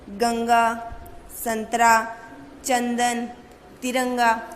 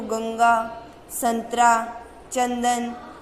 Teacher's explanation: आप जब इन वर्ण का उच्चारण करोगे तो इनकी हवा केवल कहाँ से निकलती है? नाक से। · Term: अनुस्वार